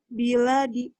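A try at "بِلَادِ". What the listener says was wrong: Biladi. Lanya panjang.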